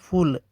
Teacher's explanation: फ महाप्राण अघोष उदाहरण के लिए